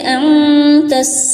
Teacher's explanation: اب دیکھیے انتس، تا کو سین کے ساتھ ملائیں گے، اوکے، اور نون میں اخفا کریں گے، یعنی کہ نون کے ساؤنڈ کو ناک میں چھپائیں گے، کیونکہ تا اخفا والی حرف ہے، اوکے۔